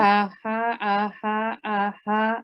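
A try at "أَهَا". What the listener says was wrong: So you're still tense. Relax. Don't tense. You were still tense. You're going aha, aha, aha, aha, aha, aha. Nice and relaxed.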